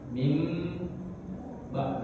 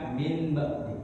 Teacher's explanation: Min kemudian ba. Nun ketemu ba berarti bacanya seakan-akan mati mim. Mim ba bukan min ba. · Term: iklab